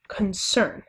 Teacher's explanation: the first syllable, again, is unstressed and the second syllable is stressed, and that is an example of an iambic foot of poetry.